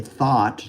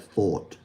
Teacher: We use this ah instead of the o usually.